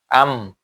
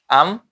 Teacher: উভয় টুট মিলিয়ে মিম উচ্চারিত হয়